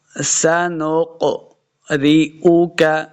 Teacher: یہ جو قاف ہے یہ حروف مستعلیہ سے ہے، اس کو ہمیشہ موٹا کر کے پڑھنا ہے، پر کر کے پڑھنا ہے.